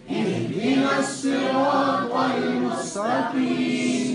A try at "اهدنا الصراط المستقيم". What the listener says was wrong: صاد أن طا. صاد أن صاد أن اهدنا الصراط المستقيم. اهدنا الصراط سين نطا. Don't change with sin and ta. Read sad and ta proper with makhraj. اهدنا الصراط المستقيم. مستقيم. مستقيم. اهدنا الصراط المستقيم.